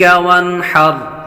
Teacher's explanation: وانحر ایسے غنہ بالکل نہیں کرنا۔ وانحر نون ساکن کے بعد ہا حروف حلقی میں سے آ رہا ہے، اظہار کا قاعدہ لگے گا، غنہ نہیں کریں گے